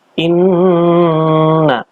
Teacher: Inna adalah bacaan gunnah. Dibaca dengan dengung 3 harokat panjangnya.